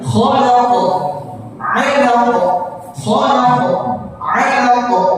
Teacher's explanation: Qalqalah jangan lupa, karena ini qalqalah kubra. Qalqalah besar, jadi khalaq 'alaq.